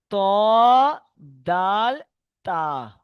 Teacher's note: জিভের আগা এবং সামনের উপরের দুই দাঁতের গোড়ার সাথে লাগিয়ে উচ্চারিত হয়